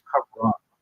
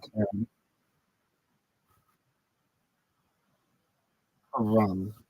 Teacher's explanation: Sounds like car run. Emphasis on the first syllable.